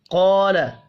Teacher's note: قال یا آدم انبئهم باسمائهم، قال، قاف کو پر پڑھنا ہے، الف مدہ 1 الف کے برابر کھینچ کر پڑھا جائے گا